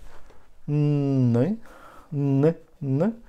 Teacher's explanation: Then when we touch again with lips, we touch upper teeth, but we give air to the nasal cavity